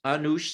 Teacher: in modern Armenian, with the diphthong reduced, anush simply means sweet